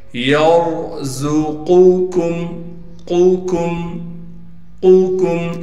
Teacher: قاف کو موٹا کر کے پڑھیں گے، قاف کو موٹا پڑھنے کے ساتھ ہی باریک حرف آ گیا کاف